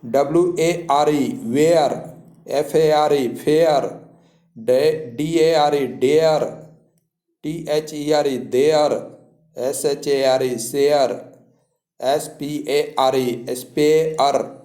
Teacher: ए का उच्चारण ए होता है और अ भी होता है, यानी ए अ दोनों मिला के होता है ए अ।